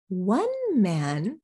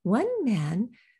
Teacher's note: we use contrast intonation to say one of this group not all of them but just one